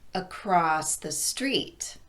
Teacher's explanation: We raise our pitch on street because that's the content word. But we emphasize the second syllable in across simply by elongating it a bit more than the first syllable